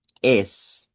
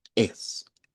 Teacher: Vea, por ejemplo, aquí podemos decir es, así abierto, pero si le ponemos ese glottal stop, digamos algo como es, como recortar un poquito el sonido